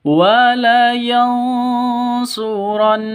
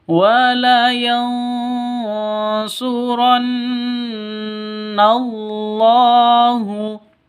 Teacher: Nah, gunnah musyaddadah itu dengung dua ketukan.